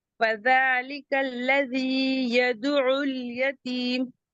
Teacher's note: اب یدعو عین حلقی سے ہے تو اسے حلق سے ہی ادا کریں گے